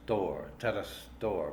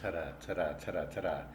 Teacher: it's kind of formed with a flip of the tongue instead of making a constant connection with the roof of the mouth as we do with a d and instead of talking about